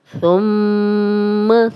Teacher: تھا کو نرم پڑھیں گے، سیٹی کی آواز نہیں آئے گی